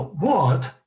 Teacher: O britânico, ele puxa o T, né? Ele fala what?